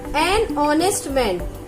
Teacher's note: Again H is silent, and when we pronounce this word honest, the sound of a vowel O is coming.